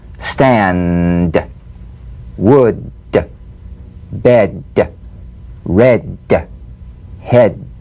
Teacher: soup yeah yeah yeah cognate voiced tongue front palatal stop consonant play this D drumbeat on the springing away of the tongue from the upper gum Ridge